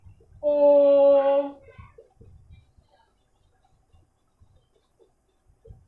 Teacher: जिन स्वरों को बोलते समय ह्रस्व स्वर से 3 गुना समय लगता है उसे पलुत स्वर कहते हैं